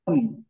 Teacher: আমাদের জিহ্বার যে গোড়া উপরে তালুর সাথে লাগবে।